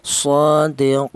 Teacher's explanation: tawas artinya sedang yaitu dua alif atau empat harakat